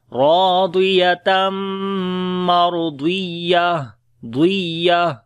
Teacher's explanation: اوپر شد ہے، را کو اور ضاد پھر موٹا پڑھیں گے، تو یا کے اوپر نبر کریں گے، یا کی آواز تھوڑی سی واضح کر کے پڑھیں گے ، اور جب رکیں گے تو تا ہا بن جائے گی،